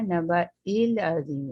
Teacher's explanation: اس کے بعد آپ کے پاس آئین ہے انشاءاللہ تعالی, نبا یہ حمزہ ہے, اور حمزہ کو آپ کوشش کریں کہ ڈیپسٹ پارٹ سے نکالیں, یعنی آپ کے تھروٹ کے بالکل نچلے حصے سے نکلے گا